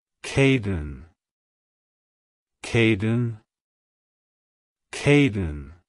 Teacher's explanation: To pronounce it correctly, emphasize the K sound at the beginning and the din sound at the end. Keep the emphasis on the first syllable.